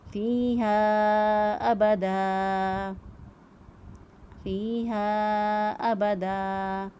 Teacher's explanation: یہ پھر یا مدہ ہے اور ہا بھی الف مدہ ہے، اس کے اوپر چھوٹی مد بھی موجود ہے، 2 سے 3 الف کے برابر لمبا کریں گے